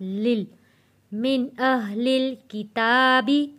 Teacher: لم یکن الذین، لم یکن الذین، نون جڑے گا تشدید والے لام کے ساتھ، یکن الذین، لم یکن الذین کفروا، کفروا، لم یکن الذین کفروا من اہل الکتاب، من اہل، دو لام ہیں، لام جڑے گا جزم والے لام کے ساتھ